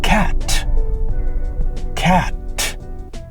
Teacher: the T sound, it's elongated and you can hear it a bit longer than most of the other letters in the word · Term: held T